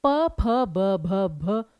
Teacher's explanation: तो यहां पर क्या है कि दोनों होठों का प्रयोग हो रहा है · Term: प वर्ग